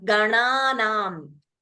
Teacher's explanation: So when you say the second na, your tongue will hit the roof of the mouth.